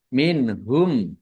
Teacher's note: Minhum nun sukun bertemu dengan huruf H bacaan izhar dibaca jelas.